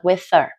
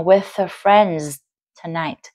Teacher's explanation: Tức là cái chữ H ở phần her, cái âm her đó các bạn có thể bỏ được